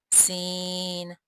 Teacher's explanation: सीन की अदायगी में ख़ास ख्याल रखें कि इसमें सीटी किसी आवाज़ पैदा हो